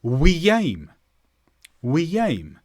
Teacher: when I connected a word ending with a vowel and another word starting with a vowel I put an extra sound in between them to help me get from one word faster to the other